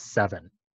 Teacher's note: instead of the voiceless F, we have the corresponding voiced sound V